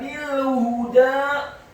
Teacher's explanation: ba-nya dibaca tipis kasrah 1 harokat, kemudian langsung disambung huruf lam yang sukun. Selanjutnya huruf ha-nya dibaca tafkhim tebal dhammah 1 harokat dan huruf dal-nya dibaca tipis fathah 2 harokat karena harokatnya tegak.